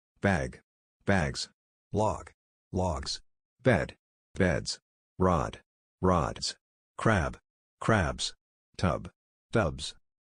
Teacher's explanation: after the following words, the plural S is pronounced as a Z